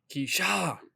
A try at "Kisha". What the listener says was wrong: it'd be pronounced Kisha. Technically, you need an accent over the I for it to actually be pronounced Keisha, unless you spell like Keisha.